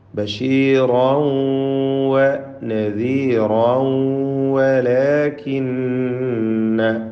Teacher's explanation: ആ 2 റാഇനും തന്നെ തൻവീനുമുണ്ട്. ആ തൻവീനുകളെ ശേഷമുള്ള വാവിൽ ലയിപ്പിച്ച് മണിക്കുക. ഇദ്ഗാം ബിഗുന്ന നാഖിസ്.